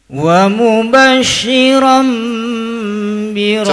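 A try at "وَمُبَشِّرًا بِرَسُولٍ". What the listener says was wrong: Coba agak renggang. Itu mah enggak renggang. Ini mah latihan ya, bukan berarti wajib renggang, enggak. Ini latihan saja. Wa mubasysyiran bi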